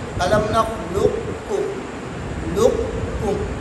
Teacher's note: ادغام ناقص کا مطلب یہ ہے کہ قاف کو بھی پڑھیں گے لیکن قلقلہ نہیں کریں گے